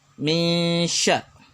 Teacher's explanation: Min syarri, ada nun sukun bertemu dengan shin. Apabila nun sukun bertemu dengan shin, maka kita membaca dengan samar huruf nun dan shinnya. Min sya, dengan cara mendengung. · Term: ikhfa haqiqi